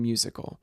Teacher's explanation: a stressed syllable followed by two unstressed syllables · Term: Dactyl